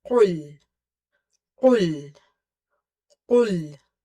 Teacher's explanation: So in the first ayah, as I have mentioned, qaf is from the root of the tongue when it touches the soft part of the palate, and it's quite heavy, so never make it light.